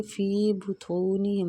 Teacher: طا مستعلیہ پر پڑھیں گے